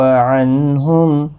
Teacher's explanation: نون ساکن کے بعد ہا آیا ہے، اظہار حلقی ہوگا، گنہ نہیں ہوگا